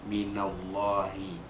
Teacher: Allah itu, lafzul jalalah itu dibaca tebal